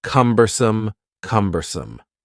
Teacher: The word cumbersome has three syllables and the stress is on the first syllable.